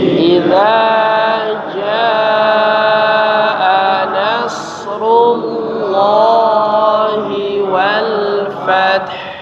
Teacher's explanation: Pertama huruf jaa ya dipanjangkan 5 harakat ya. Kemudian nasrullahi tebalkan huruf lamnya ya, rullah ya